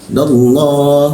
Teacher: Mulutnya tetap A tapi keluarnya seperti O.